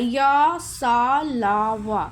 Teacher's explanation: सारे आधा-आधा स्पर्श करता है। पूरी तरह से नहीं छूता है। जैसे बोलने में भी लगता है य स ल व इस तरह से।